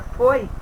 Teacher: E o som representado pela palavra foi é fechado